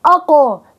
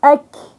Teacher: القاف لوراء اقو الكاف لقدام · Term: مخرج الكاف